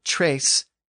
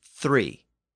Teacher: the T sound had shifted to a TH sound